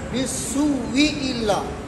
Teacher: اس پہلے والے حمزے کو واو سے تبدیل کر کے اور دونوں واو کا آپس میں ادغام کر دیں گے